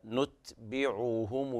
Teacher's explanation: حافظ على ضم العين والهاء معا